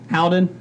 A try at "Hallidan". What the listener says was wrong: Yeah, I think it's only 2 syllables. You're adding an L.